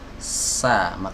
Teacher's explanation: suaranya ini keluar dari celah ya antara gigi seri atas dan gigi seri bawah yang didekatkan. Nah, jadi kalau kita senyum, nah, kelihatan dua gigi seri kita, gigi seri atas dan gigi seri bawah. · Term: huruf Sin, huruf sin